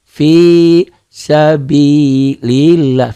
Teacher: Lafaz Allahnya dibaca tipis, dibaca tarqiq.